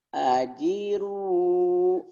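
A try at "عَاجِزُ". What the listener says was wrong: Mana itu kan ada titiknya, Pak? Roknya. Bukan, J-nya kan panjang, Pak. Ajizu. Zu-nya rapuh ya, Pak. Ajizu.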